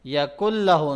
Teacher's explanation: نون کو لام میں مرج کر دیں گے